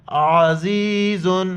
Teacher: واللہ عزیز، عین کو گلے سے ادا کریں گے اور زا سیٹی والی الفاظ ہے، سیٹی کی طرح ادا کر کے یا کے ساتھ ملائیں گے. عین زبر ع، زا یا زیر زی، زا دو پیش زن، عزیز.